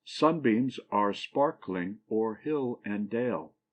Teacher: a foot that has the first syllable accent and the last two unaccented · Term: Dactyl